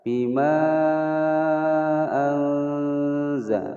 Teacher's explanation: Bima sendiri, anzala sendiri, ini adalah hukum bacaan mad jaiz munfasil, dibaca panjang 5 ketukan. Bima anza, nun sukun bertemu zai, disamarkan kemudian didengungkan selama 2 ketukan atau 2 harokat. Hukum bacaan ikhfa.